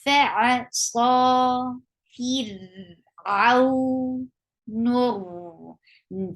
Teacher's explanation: Sa is 2 counts long, and it is heavy.